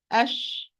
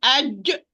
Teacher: There is no contact at all. So the middle part of the tongue raised toward the hard palate, but leaving a distance in between them to allow the voice to run. That's why Sheen, it's a loose letter.